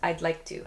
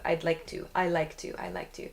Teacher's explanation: My tongue touches the top of my mouth when I make the “D” sound.